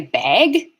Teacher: when I say bag, the vowel is distorting and becoming a diphthong